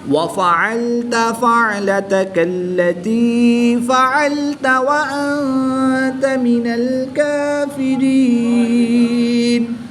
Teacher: نون ساکن ہے، نون ساکن کے بعد تا حروف اخفا میں سے ہے تو یہاں پر اخفا ہوگا، یعنی غنہ زمانی کر کے پڑھیں گے۔